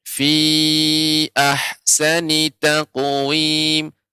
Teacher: untuk fi ahsani tidak panjang, Nek, ya, dibaca dengan pendek